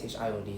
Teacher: Rekishi, the I is silent.